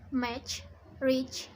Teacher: the sounds are made through the combination of a stop and a fricative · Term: affricates